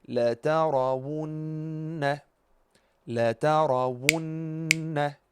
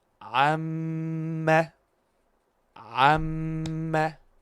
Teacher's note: We have to do ghunnah for two beats